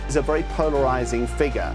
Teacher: This is a common feature of non-roic accents like received pronunciation where the rah sound is typically dropped unless it appears at the beginning of the syllable.